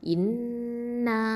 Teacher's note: நூன் அப்படிங்கிறது தரஃபுல் லிசான் நுனினாவை எழுத்து. இதில் ஷத்தா இருக்கிறதுனால அக்கமல் குன்னா கொடுக்கணும். முழுமையாக பூரணமாக நம்ம தஷ்தீது குன்னா கொடுத்து ஓதணும்.